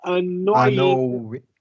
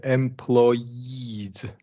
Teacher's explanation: there's a vowel after the OI diphthong, so we're gonna really emphasize that Y sound